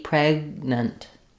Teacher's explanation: rewrite that respell that as PR with an unreleased G pregnant almost like no vowel in the second syllable